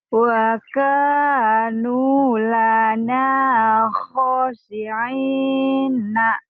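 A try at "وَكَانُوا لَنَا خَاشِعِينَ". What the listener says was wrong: Kho-nya kan panjang, Bu. Wa kanu lana khashi'ina.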